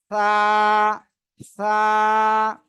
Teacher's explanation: জিহ্বার আগা সামনের উপরে দুই দাঁতের আগায় লাগাবেন লাগিয়ে উচ্চারণ করবেন